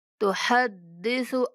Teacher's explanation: تحدث کے سا کو لمبا کر کے نہیں پڑھیں گے ، تحدثو نہیں پڑھیں گے، تحدث أخبارها بأن غنہ کریں گے،